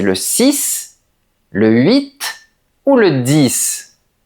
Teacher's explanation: quand ils sont isolés, on prononce la dernière lettre.